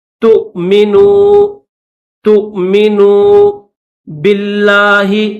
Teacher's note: یاد رکھیے گا ہم یہاں پر واو کو نہیں پڑھیں گے، اوپر جو حمزہ آپ کو چھوٹا سا دکھ رہا ہے تا کے بعد حمزہ کی آواز نکالنی ہے، تھوڑا سا جھٹکا لگا کر پڑھیں گے ، تؤمنوا باللہ، با کو لفظ اللہ کے ساتھ ملائیں گے